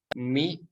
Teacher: tempat keluarnya dari Asia patin menempelkan kedua bibir kita dua-dua kemudian huruf mim sama menempelkan kedua bibir kita mie dan berharakat kasroh maka menyempurnakan harokat kasrah kita harus ditarik